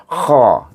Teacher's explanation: kha alif kha dengan isti'la, ya, mengangkat pangkal lidah. Kha bunyinya, tapi bunyi ha bawah sana, tengah-tengah ha pedas, atas sikit di ujung halkum kha.